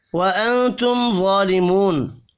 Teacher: نون ساکن کے بعد تا ہے، اخفاء حقیقی ہوگا. میم ساکن کے بعد وا ہے، اظہار شفی ہوگا، یہاں پر غنہ نہیں ہوگا.